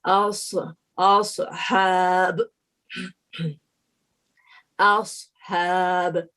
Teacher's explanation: ہماری جو tip of the ٹنگ ہے وہ دانتوں سے ٹچ نہیں کرنا ہے تاکہ ہماری سیٹی کی ساؤنڈ جو وسلنگ ساؤنڈ ہے یہ ہمیں ظاہر ہو